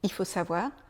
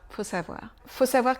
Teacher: parfois on entend le I de il il faut savoir et parfois quand on va très vite on entend même plus le i